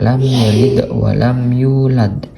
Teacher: di sini bacanya itu secara terang kayak lam yalid Wam yulad tanpa dengung ya secara terang dan jelas